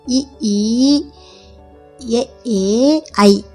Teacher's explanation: வாயை திறப்பதோடு மட்டுமல்லாமல் மேல்வாய் பல்லை நாவின் விளிம்பு தொடுவதால் பிறக்கிறது